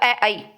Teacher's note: कंठ और तालु से जो उच्चारण करके निकलते हैं वो है अ ऐ। अ ऐ बोल के देखिए।